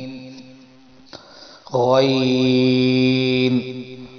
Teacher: جہاں سے عین نکالیں گے اس سے تھوڑا سا منہ کی طرف آئیں تو وہاں سے نکلے گا غین. یہاں سے خا نکلا تھا وہیں سے غین، غین.